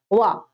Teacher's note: दंत्य ओष्ठ जिसमें दांत और ओठ दोनों का प्रयोग किया जा रहा है बोलते टाइम उच्चारण के समय, तो वो वा है, वा।